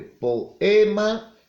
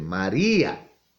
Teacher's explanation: vocales que están unidas pero el momento de pronunciar no pronunciamos unidas